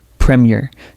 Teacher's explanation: Notice how the first syllable carries the stress and the second syllable is lighter.